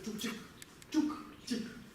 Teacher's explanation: в конце слога, как и в русском языке, происходит оглушение. То есть га становится ка.